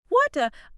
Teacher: my tongue is barely grazing the roof of my mouth